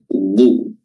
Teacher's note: huruf dad makhrajnya adalah tepi lidah bertemu dengan gigi geraham